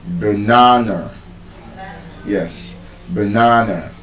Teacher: This is the reason, even though this is not bisyllabic, the word banana is not banana. There's a schwa sound in the first A and the last A.